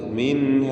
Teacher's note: മിൻഹ എന്ന് കൂടുതൽ നീട്ടിക്കൊണ്ട് നിർത്തരുത്, മറിച്ച് മിൻഹ അത്ര മതി.